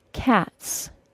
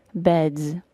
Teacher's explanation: if a word ends in an unvoiced sound like the T sound in the word cat for example the final s is pronounced as an S sound